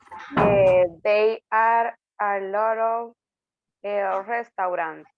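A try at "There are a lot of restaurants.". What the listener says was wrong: Just remember on this one. There. Ahí por pronunciación para que no se escuche como que decimos they. Estamos diciendo there.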